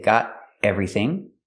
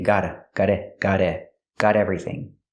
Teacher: You can make a stop T and say got everything.